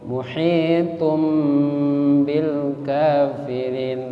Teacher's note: Ketemu ba maka iqlab. Berubah bunyi menjadi huruf mim.